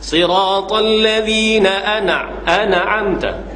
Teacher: Matikan nun, jelas. Mati terus. Jangan duk berbaris lagi dah.